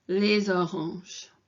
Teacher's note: And if you listen to this when I'm pronouncing it, it kind of runs into des oranges. So whenever you've got something that ends in this S here, les or des, and it's followed by the vowel, then it kind of runs into almost like a soft Z sound